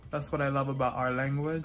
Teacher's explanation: york the dark l is in words like pole and ball in miami english you'll hear that dark l in places where you wouldn't hear it in other varieties